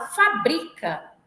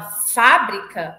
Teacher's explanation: a palavra fabrica é paroxítona a palavra fábrica é proparoxítona